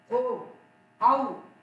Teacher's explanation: ओ और औ का उच्चारण स्थान कंठ और ओष्ठ है, अतः इनको कंठ और ओष्ठ वर्ण कहते हैं। जैसे ओ औ है ना, दोनों मिलता है उसमें।